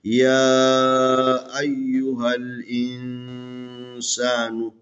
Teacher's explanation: یہ چھوٹی مد کی علامت ہے، یہاں پر 2 سے 3 الف کے برابر. ایک کھڑی زبر جو ہے نا الف کے برابر ہے، یہاں پر مد ہے، اس کو 2-3 الف کے برابر کھینچیں